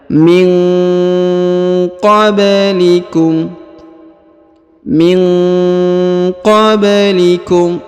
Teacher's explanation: Nun sukun bertemu dengan huruf qaf, maka dibaca dengung dan disamarkan